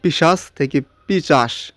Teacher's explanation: সামনের ব্যঞ্জনটা পরে গেল এবং পরের ব্যঞ্জনটা আগে আসলো, তাই না? এই যে তালবস্যটা পরে গিয়েছে, ছটা আগে আসছে। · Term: ধ্বনি বিপর্যয়